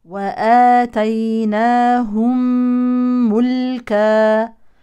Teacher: هذه الميم الساكنه تدغم في الميم المتحركه بعدها ادغام شفوي